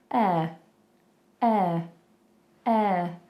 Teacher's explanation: That last sound is a schwa. If you don't know what a schwa is a completely neutral sound.